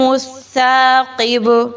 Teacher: اذا السماء انشقت، ما الطارق النجم الثاقب، جیم کو اس لیے ہلا کے پڑھا ہے کیونکہ جیم حروف قلقلہ میں سے ہے، اس لیے اس کو ہلا کے پڑھیں گے۔ ثاقب میں با پر جب جزم لگائیں گے، وقف کریں گے تو با کو بھی ہلا کر پڑھیں گے کیونکہ وہ بھی حروف قلقلہ میں سے ہے